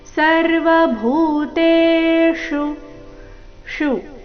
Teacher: ಇಲ್ಲಿ ಮೂರ್ಧನ್ಯಶ ಉಕಾರದೊಂದಿಗೆ ರಸ್ವ